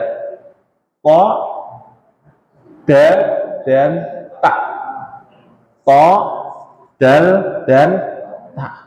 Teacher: Nah, ujung lidah ditempelkan ke situ, ditempelkan ke pangkal gigi seri atas. Ujung lidah dengan pangkal gigi seri atas.